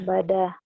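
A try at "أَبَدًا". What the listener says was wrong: Tapi jangan ada hanya ya abada kayak ada k ujungnya. Coba lagi abada.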